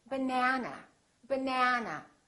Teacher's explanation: this second syllable is stressed that means this vowel is going to be much longer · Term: vowel length